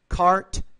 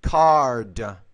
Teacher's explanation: the t is a voiceless consonant the D is a voiced consonant which means the vowel which precedes the voice consonant should be